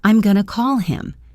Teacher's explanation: Going to becomes gonna, and the H in him disappears.